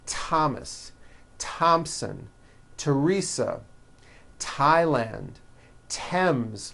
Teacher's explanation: they are pronounced as if they were spelled with a normal T